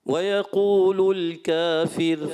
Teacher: کافر میں را کو باریک رکھیں